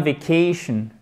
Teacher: Time, I will go on vacation, accent tonique qui est sur la syllabe précédant le shun